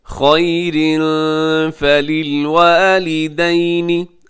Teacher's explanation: قاف موٹا کلکلا اور را بھی آپ نے پر پڑھنا ہے، موٹا پڑھنا ہے کیونکہ اس کے اوپر حرکت ہے